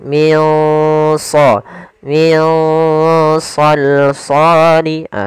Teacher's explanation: Shad termasuk huruf yang tebal dan huruf Istia maka dia samarkannya agak ditebalkan · nunnya ditandai dengan warna hijau yaitu berdadakan dia bacaan Ikhfa pula cara membacanya adalah kita samarkan nunnya ke huruf Shad